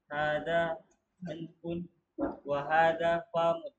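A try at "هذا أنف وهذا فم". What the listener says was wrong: Fa-nya jangan panjang. Hada anfun wa hada famun. Jangan dibaca famun. Hadza anfun wa hadza famun. Hadza anfun wa hadza famun.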